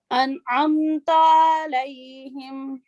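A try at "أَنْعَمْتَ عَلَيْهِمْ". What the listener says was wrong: ہاں جی، یہ تا جو ہے 1 سیکنڈ بس اس کو، ٹھیک ہے. انعمت، تا لمبا نہ ہو.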